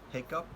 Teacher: h, which is a voiceless glottal fricative sound